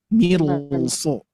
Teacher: Yang harusnya mir tipis dikarenakan di depannya ada huruf sod, maka ini otomatis ro-nya menjadi tebal.